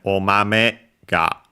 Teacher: So after the me, the accent falls, is lower.